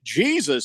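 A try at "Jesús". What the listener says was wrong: It looks like Jesus, but I believe it's the J is silent.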